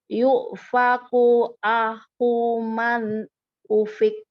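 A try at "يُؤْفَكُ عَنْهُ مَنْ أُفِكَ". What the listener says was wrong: Masih belum nyampe hamzahnya. Yu'faku. Nggak boleh. Yuk, masih ngegeser suaranya. Ayo. Tegas, langsung berhenti.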